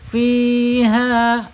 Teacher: Ini secara hukum bacaannya mad tabi'i, panjangnya 2 harokat. Ya, 2 harokat, 1 alif atau 2 ketukan sesuai dengan temponya ya, sesuai dengan iramanya.